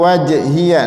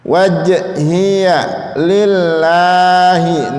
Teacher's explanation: Qalqalah artinya suara memantul. J-nya itu mantul itu. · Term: qalqalah sughra